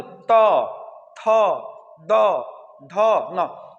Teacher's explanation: ये जो जीभ है ना, ये दांत से दबा रहा है।